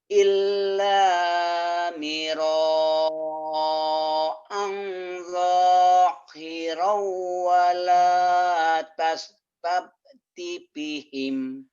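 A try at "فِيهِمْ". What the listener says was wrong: Fihim panjang. Wala tastafti fihim.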